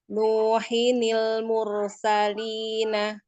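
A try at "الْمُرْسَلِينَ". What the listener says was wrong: Roknya tebal lagi kayak tadi awal. Mursalina.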